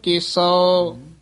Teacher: ਕੇਸਉ ਕਨੌੜੇ ਨਾਲ ਬੋਲਣਾ ਕੇਸੋ ਨਹੀਂ ਕਹਿਣਾ